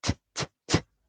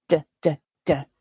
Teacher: So the t is the voiceless sound, and I'm simply vibrating my vocal cords to get the d, d, d. They're both made in exactly the same place.